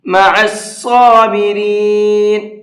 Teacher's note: صاد کو بھی پر کر کے پڑھیں گے